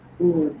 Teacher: back वाल इज ऊ, बिल्कुल जो टंग है वो पीछे चली जाती है